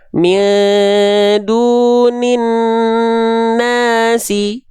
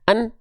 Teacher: Gunnah dengungkan 2 harokat, an-nya tahan 2 harokat.